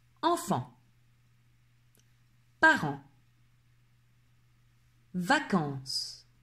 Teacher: nez et par la bouche en même temps ce qui donne un son très similaire à lorsqu'on a le nez bouché et qu'on est malade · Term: le son en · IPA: [ɑ̃]